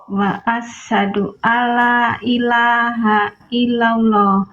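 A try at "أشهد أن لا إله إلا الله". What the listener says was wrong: Diawali dengan huruf alif. Bukan wa, tapi alif. Diawali alif.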